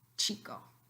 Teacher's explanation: Then you only have one sound in the row of africada, which is an affricate. Africada, a combination of a stop and a fricative.